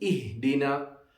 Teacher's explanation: a small ha and no echo sound on it